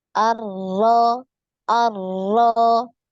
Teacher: Ya, jadi getarnya sekali ya.